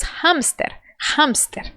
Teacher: Do inglês, o H é aspirado. Por isso que nós dizemos hamster, hamster.